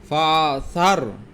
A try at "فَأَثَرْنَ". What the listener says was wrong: ফাআসার। এ ফার পরে আবার হামজা আছে, হামজা জবর আ না। ফাআসার।